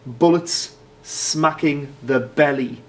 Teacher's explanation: we've got the alliteration of bullets and belly that's what we call plosive alliteration